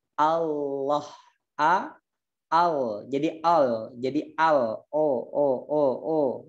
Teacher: tepi lisannya ini disentuhkan ke gusi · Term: lafadz Allah